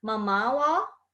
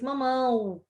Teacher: Uma é vogal, o A nasalizado, né? An, e tenho a semivogal, que é o O com som de U.